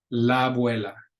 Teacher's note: but they're tied in together la abuela and you can read the description says they're pronounced like one long vowel